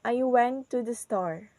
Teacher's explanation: So the pitch of our voice is goes down in the word store. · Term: falling intonation